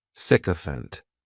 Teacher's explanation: this noun has three syllables and the stress is on that first syllable